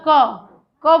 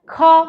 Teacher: क ख का मतलब स्वर तंत्रियों में कंपन नहीं होता। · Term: अघोष